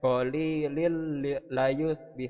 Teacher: jadi kasrotain disini melebur masuk ke huruf lam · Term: idgham bilagunnah